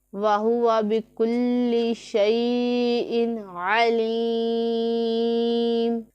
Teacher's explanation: یا مدہ ہے، اسے ایک الف کے جتنا کھینچ کے لمبا کریں گے